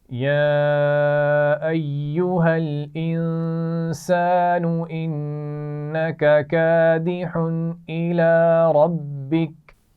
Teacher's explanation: یا ایہا، ٹھیک ہے، اس پر چھوٹی مد ہے، تھوڑا سا کھینچ کر پڑھیں گے